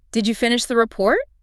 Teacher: Clear, rising intonation. Hear that lift. Clearly a question, expecting an answer.